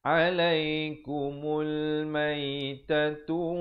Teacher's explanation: Terus kita naik di atas lam yang bertanda mati. Di sini alif lam qamar, ya. Pastikan lamnya disebutkan dengan jelas.